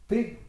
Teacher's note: P, c'est fait avec le bout des lèvres. D'accord? C'est un phonème qui est donc à l'avant. C'est une occlusive, donc elle est très affirmée.